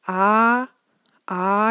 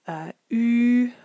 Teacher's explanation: for an ah ah you have a very open mouth whereas for an uh U for example it's closed